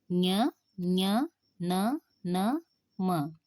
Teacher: ಅನುನಾಸಿಕ ಅಕ್ಷರಗಳು ಅಥವಾ ಅನುನಾಸಿಕ ಅಕ್ಷರಗಳು ಅಂದರೆ ಏನು ನಾಸಿಕ ಅಂದ್ರೆ ಮೂಗು ಅಂದ್ರೆ ಮೂಗು ಬಾಯಿಯ ಸಹಯೋಗದಿಂದ ಉಚ್ಚರಿಸುವ ವ್ಯಂಜನಾಕ್ಷರ ಅನುನಾಸಿಕ ವರ್ಗದ ಐದನೆಯ ಅಕ್ಷರವನ್ನ ಅನುನಾಸಿಕ ಅಂತಹೇಳಿ ಕರೀತೀವಿ ಅಂದ್ರೆ ಮೂಗಿನ ನ ಸಹಾಯದಿಂದ ಉಚ್ಚರಿಸಲ್ಪಡತಕ್ಕಂತಹ